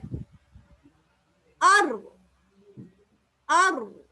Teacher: நடுநாக்கை நீங்க வந்து கீழ கொண்டு போகல என்று சொன்னால் அங்க வல்லினமான ரா வெளிவராது